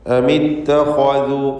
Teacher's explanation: ഇത്തഖദു എന്ന പദത്തിലെ ഖാഇൻ്റെ ഉച്ചാരണം തടിപ്പിച്ചുകൊണ്ട് സ്വരഭാരത്തോടെ ആയിരിക്കണം. കാരണം അത് ഇസ്തിഅലാഇൻ്റെ ഖുസ്സദഖ്തിൻ ഖിദ് എന്ന 7 ഹർഫുകളിൽപ്പെട്ട തഫ്ഖീം ചെയ്ത് തടിപ്പിച്ചുച്ചരിക്കേണ്ട അക്ഷരങ്ങളിൽപ്പെട്ടതാണ്.